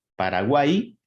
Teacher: el sonido de la Y es muy similar a la I latina, es decir, es un sonido vocálico